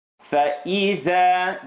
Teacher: The letter dha in this scenario, the tongue had to come to the cusp of the teeth. Has to come out a little bit.